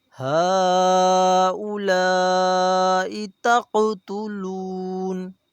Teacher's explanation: قاف حروف قلقلہ ہے، یہاں قاف کو ہلا کر پڑھا جائے گا